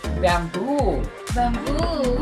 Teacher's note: the stress or the accent should be on the second syllable